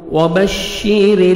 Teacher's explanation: را کے نیچے زیر ہے، را کو آپ نے باریک پڑھنا ہے